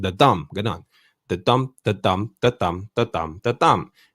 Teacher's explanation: the first syllable will be unstressed followed by a stressed syllable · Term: iamb